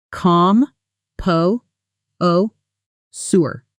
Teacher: Stress on the second syllable and that sure ending sounds soft like jur.